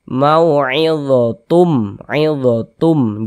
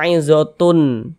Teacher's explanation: Bunyi tanwinnya ini masuk ke huruf mim, melebur ke huruf mim.